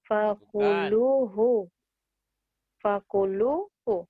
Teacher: Lu-nya panjang, hunya pendek.